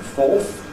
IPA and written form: fɔːθ (fourth)